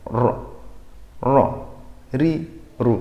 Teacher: kira-kira getarnya berapa yang 2/3 kali saja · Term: getarannya